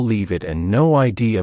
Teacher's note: sometimes one word flows into another for example leave it and no idea both sound like they have no spaces between the words